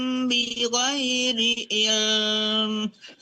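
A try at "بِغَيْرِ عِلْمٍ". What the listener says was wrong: jangan terlalu menahan lamnya itu kalau kita mau berhenti ya. Ada wam bi ghairi ilm. Langsung jangan ilm lagi. Ilm langsung ya.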